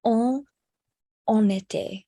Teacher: So we do pronounce the N because the next word begins with a vowel.